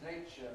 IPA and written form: ˈneɪʧə (nature)